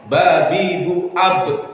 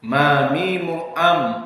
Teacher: Bedanya dengan mim, ba lebih kuat intibaknya. Ba bi bu ab, ma mimu am sedikit lemah.